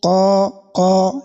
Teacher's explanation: this type of elongation is what is known as al-mad al-asli, so it has a duration of only 1 second